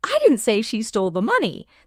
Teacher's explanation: The stress on stole emphasizes that she may have borrowed it, not stolen it.